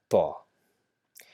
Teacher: it's not exactly W, just a slight W sound